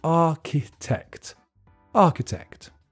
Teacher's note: The pronunciation is tricky because there's a ch in the middle that's just pronounced k, and the middle syllable is weak.